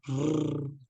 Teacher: il faut que vous veniez taper votre langue sur le palais au niveau des incisives supérieures et non inférieures. Mais plusieurs fois. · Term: Ra